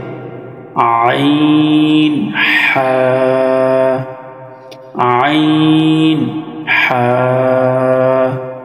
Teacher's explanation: 2 number মাখরাজ হলকের মধ্যখান হইতে আইন হা